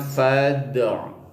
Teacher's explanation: Dibacanya fad'u. Ada bunyi pantulan ketika mengucapkan kalimat dal itu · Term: qalqalah sugro